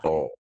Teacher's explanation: Untuk huruf ta ni, pangkal lidah kena naik.